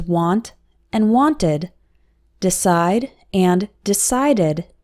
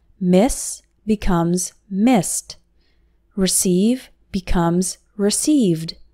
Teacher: The ed ending only adds an extra syllable when after a verb ending with t or d